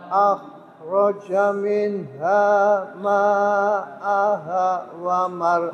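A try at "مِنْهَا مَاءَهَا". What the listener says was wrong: ma-nya kurang panjang Mbak minha ma'aha min hanya dua panjang tapi gak panjang banget akhraja minha ma'aha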